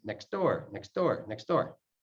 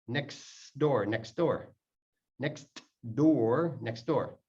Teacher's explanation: The T disappears. The D takes over.